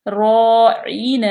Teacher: را پہ زبر ہو تب بھی را پور پڑی جاتی ہے